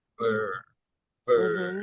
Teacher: some sounds are more partially rounded. They're not as fully rounded, like in bird.